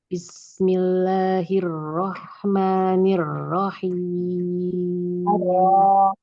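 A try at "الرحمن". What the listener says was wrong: Tafkim. Arro. Arro. Arro. Buka lagi fathahnya. Arro. Bismillahirrahmanirrahim. Arro yang pertama, yang kedua.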